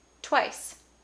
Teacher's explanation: There's this kind of extra aspiration around the W because of the T sound, because the T is voiceless, twice. So I think a more accurate way to represent that would be to devoice that W, twice. Another example that follows the exact same, kind of pattern is the word quick.